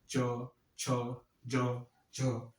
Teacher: जब किसी वर्ण का उच्चारण करते तो जिह्वा हमारी कहाँ जाके स्पर्श करती है, तालु में। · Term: तालव्य वर्ण